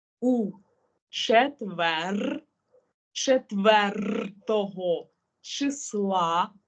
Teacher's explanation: Наша задача навіть літери рр трохи протягувати